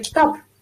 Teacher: Ba'zida mesela kitob deganingizda o'zi aslida P chiqayotganga o'xshaydi.